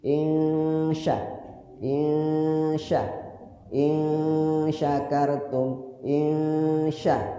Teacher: Ikhfa. Cara bacanya nunnya disamarkan dan lidah kita langsung ke huruf shin.